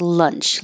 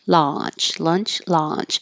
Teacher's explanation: The vowel here is ah, so you have to leave your jaw more open. If you're not, it might sound like lunch, like did you eat lunch?